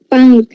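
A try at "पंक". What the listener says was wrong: पंख नहीं है, पंख है। पंख, का खा नहीं लगाओ, का। हाँ हाँ हाँ।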